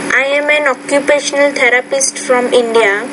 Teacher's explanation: so you're speaking in a very monotone